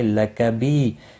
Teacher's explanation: بی یا مدہ ہے، ایک الف کے برابر کھینچ کر پڑھیں گے